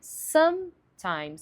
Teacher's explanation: Geralmente as pessoas falam sometimes, sometimes, sometimes. Só que a pronúncia mais clara é sometimes, enfatizando some, que é bem o oposto do português